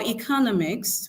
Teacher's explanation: And then for economics, we have the stress on the penultimate syllable.